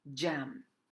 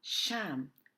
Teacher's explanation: hold the air activate your voice before abruptly releasing the air the letter J is similar to sh except that it's voiced